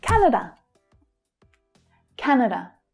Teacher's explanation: The stress is on the first syllable and see how the second one's reduced to the schwa sound, the unstressed sound.